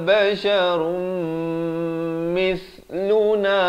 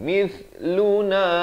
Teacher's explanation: mith di hujung lidah keluar, mith di antara dua gigi. Mithluna turidu, turi, ri jadi nipis.